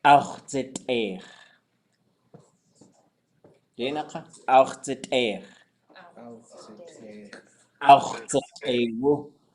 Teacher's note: this XW consonant, we always have to make sure we're not trying to squeeze a vowel in there.